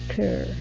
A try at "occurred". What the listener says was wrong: Okay, give me a D sound there at the end. Occurred.